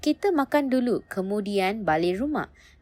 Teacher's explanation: finishes with a falling tone to show the idea is complete